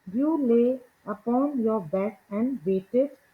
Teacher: These extra unstressed syllables, that is the ed in waited, specifically create something called feminine endings.